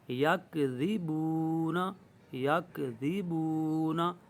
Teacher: ذال کو نرمی سے ادا کرے، سیٹی کی آواز نہیں آنی چاہیے، سختی پیدا نہیں کرنی وگرنہ زا بن جائے گا. تو یہاں پر جب وقف کریں گے تو نون پر زبر ہے، جزم لگ جائے گی، سکون آ جائے گا.